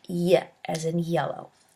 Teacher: When we bring the tongue close to or in contact with a hard palate, the sound is called palatal. There's only one palatal sound in English, y as in yellow. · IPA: /j/